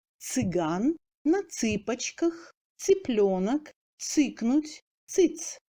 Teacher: Même si ce sont les voyelles de la seconde série qui suivent le tse, le dernier se prononce toujours dur, à l'exclusion de quelques mots.